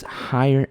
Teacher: notice how i said higher with a higher tone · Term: higher in intonation